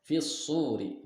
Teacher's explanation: Nah, fis-suri di sini hukumnya adalah mad alif atau alif lam syamsiyah karena huruf alif lam bertemu dengan huruf syamsiyah yaitu shad. Dibacanya idgham masuk ke huruf shad.